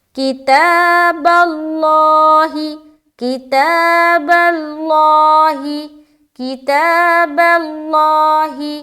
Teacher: لفظ اللہ کا جو لام ہے وہ ہم موٹا کر رہے ہیں، کیوں؟ کیونکہ با کے اوپر زبر آ گیا۔